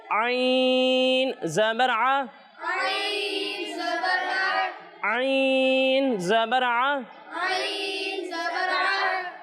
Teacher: اور جب ہم عین کی ادائیگی کریں گے تو اسے حلق کے درمیانے حصے سے پڑھنا ہے